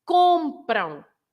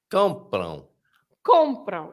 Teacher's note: lots of people stress the end, and they shouldn't, because the M is not there